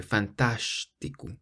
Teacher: and the word fantastic is pronounced a little bit strangely because the s in Portuguese when it's in front of a t is pronounced like a sh sound